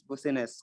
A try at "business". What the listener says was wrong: Ini dibaca bisnis. Bisnis, bukan busnis ya, bisnis. Tulisannya memang bisnis, tapi dibaca bisnis ya.